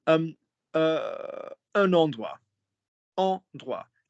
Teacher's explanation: We don't pronounce the T.